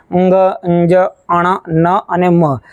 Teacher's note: મ તો આ જે પાંચ અક્ષરો આ જે પાંચ વ્યંજનો છે એ તમારે જ્યારે બોલવા હોય ત્યારે થોડી હવા નાકમાંથી પણ આવે છે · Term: અનુનાસિક